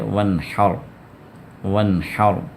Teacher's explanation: اور یہاں پر وانحر ہا کے ساتھ، ہا عین، ہا جو ہے نا، عین جہاں سے نکلتا ہے وہیں سے یہ ہا بھی نکلے گی